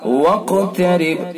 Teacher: واقترب قاف کے اندر قلقلہ اور پر بھی کریں گے قاف کو، واقترب با ساکن تو با کے اندر قلقلہ ہوگا۔